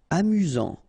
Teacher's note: get this final not pronounced amus final not pronounced you've got Only One S here between the vowels so it's really this z sound